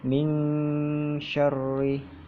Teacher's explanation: Jadi tengah lidahnya ketika menyebutkan min itu tempelkan di mana makhraj sya itu keluar. Itu tengah lidah itu langit-langit. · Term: ikhfa